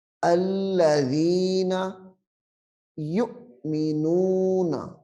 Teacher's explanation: جب جزم ہو، یعنی حمزہ ساکنہ، حمزہ ساکنہ، اس کو ہمیشہ جھٹکا دے کر پڑھتے ہیں